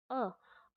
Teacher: अ में जीभ का बीच वाला भाग नीचे की ओर बैठ रहा है, तो ये तो होगा हमारा मध्य, मध्य स्वर।